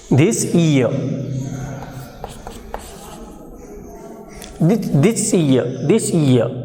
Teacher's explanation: when the first word ends in consonants and the next word begins with palatal sound, in such circumstances, in such occurrences, the sound of the first word becomes palatized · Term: palatalization